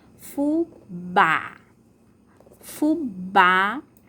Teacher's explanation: Fubá, a sílaba tônica é o bá. E o som é aberto. Então, fubá, bem pela boca, bem a boca aberta, ó, fubá, né?